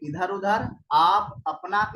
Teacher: जिनकी ध्वनि केवल मुख से निकलती वे निरनुनासिक स्वर हैं जैसे इधर उधर, आप, अपना इत्यादि।